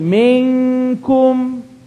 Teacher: Tongue not touched. Ikhfa.